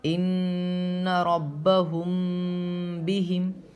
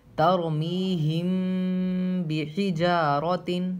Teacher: ان ربہم بہم، میم ساکن کے بعد با ہے تو غنہ کے ساتھ اخفاء ہوگا، میم پہ غنہ ہوگا، با پہ اخفاء ہوگا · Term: اخفاء شفوی